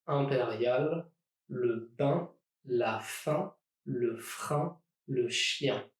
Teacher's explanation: vowels you can make when breathing out your mouth and your nose at the same time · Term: nasal vowels